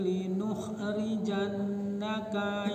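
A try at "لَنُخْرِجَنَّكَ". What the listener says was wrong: Lanukhrijannaka bukan li. Lanukhrijannaka ya Syu'aib walladzina amanu. Lanuh bukan linuh. Lanukhrijannaka.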